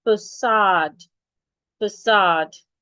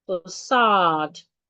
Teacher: You're stressing the second syllable in facade. And the second syllable has a long vowel.